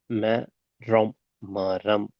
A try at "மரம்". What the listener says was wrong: மா இல்ல, திருப்பி மரம். தனித்தனியா ஓதுனது சரி. தனித்தனியாக ஓதுனது சரி. மொத்தமா ஓதுனதுல மிஸ்டேக் இருக்குது. மெரம்.